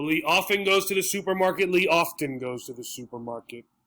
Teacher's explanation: a lot in english as we speak faster things disappear so the t sound which is a little bit difficult to say often just it goes away and it disappears